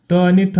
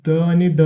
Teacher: त आणि थ हे कठोर व्यंजने दिले आहेत द आणि ध हे मृदू व्यंजने दिले आहेत